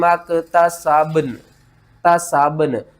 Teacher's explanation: با اس کے اوپر آپ نے قلقلہ کرنا ہے، اور نون با کے اوپر قلقلہ کر کے نون کے ساتھ ملانا ہے